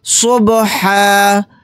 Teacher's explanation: یہاں پر آیت کرنے کی صورت میں ہا کے اوپر 1 زبر اور الف لگا کر پڑھیں گے۔ با کے اوپر جزم ہے، یعنی با ساکن ہے، تو یہاں پر قلقلہ بھی کریں گے